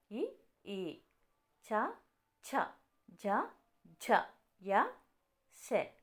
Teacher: తాళువు అనగా దవడ భాగంలో పుట్టే అక్షరాలు ఇ చ ఛ జ య శ స ఇవి తాలభ్యాలు ముర్ధస్థానం అంటే శిరస్సు నుండి పుట్టే అక్షరాలు అరు రు అరు ట ఠ డ ఠ న ర ష వీటిని మోర్ధన్యాలు అంటాము.